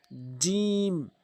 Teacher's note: জিম জিহ্বার মাঝখান উপরের তালো